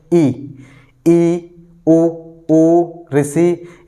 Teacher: एक बार प्रयास करेंगे, जैसे ई, ओ, ऋषि, यानी कि बहुत ही कम मुख खुलने के बाद हम इन स्वरों को बोल सकते हैं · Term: संव्रत स्वर